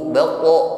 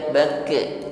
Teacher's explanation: Kenapa? Karena huruf qaf adalah huruf tebal, sifatnya isti'la, tasa'udus saut ilal hanakil a'la, suaranya menatap ke langit-langit atas. Baqo, bukan baqi, baqo.